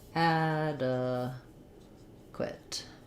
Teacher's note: we have first syllable stress the black cat vowel and uh and then this q u says qua um we